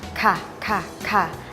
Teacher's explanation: ให้ยกโคนลิ้นแล้วพ่นลมหรือออกเสียงคล้ายการขาก